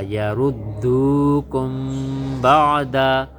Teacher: کاف میم پیش کم، کاف اس میم ساکن کے ساتھ ملی، میم ساکن کے بعد اگر حرف با آ جائے وہاں پر اخفا کا قاعدہ لگتا ہے، یعنی ہم غنہ کر کے پڑھتے ہیں۔